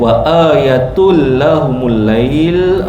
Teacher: Tanwin masuk dalam lam masukkan tanpa dengung. Idgham bila ghunna.